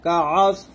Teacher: আইন সদ জবর আস, সদ মোটা করে, কাআস